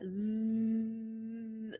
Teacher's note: Your tongue tip is right behind the top teeth. You smile and you turn your voice on.